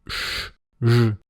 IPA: ʂ ʐ